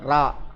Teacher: அடுத்தது 3வது ரா ரா. நாவின் நுனி மேல் அன்னத்தில் முதல் பகுதி, பல்லில் கூட படக்கூடாது, பல்லுக்கு பின்னாடி கிடையாது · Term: வல்லின ரகரம்